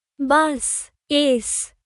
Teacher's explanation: A long, hissing sound like a snake for the S sound.